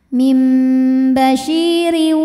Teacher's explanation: Mim bashi, shi mad tabi'i dhahiri karena ada ya sukun didahului kasrah, maka shin panjang 2 harokat. Basyiriu, ra-nya dibunyikan secara tarqiq karena berbaris kasrah tanwin, maka dibacanya tipis. Mim basyiriu.